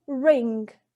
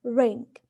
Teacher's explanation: r in ring, the tongue is raised to hard palate, but not too close. It's not completely stuck with the hard palate, it's just raised towards it. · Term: ruled